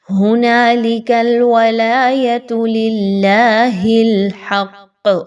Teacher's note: اب چونکہ یہ تشدید کے ساتھ بھی آ گئی اور قلقلہ کا بھی حرف ہے، اور یہاں پہ وقف بھی آپ کر رہے ہو، تو قلقلہ بہت اسٹرانگلی کیا جائے گا، قلقلہ کی سب سے اولا درجے کا یہاں پر کیا جائے گا